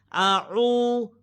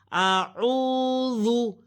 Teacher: आगे है ऊ, ऊ, वाव साकिन से पहले आइन की ऊपर पेश है, जिसको हम एक अलिफ के बराबर खींचेंगे, लंबा करेंगे, इसको वाव मत कहते हैं। आऊ, और आइन को हरूफे हल्की के दरमियाने हिस्से से अदा किया जाएगा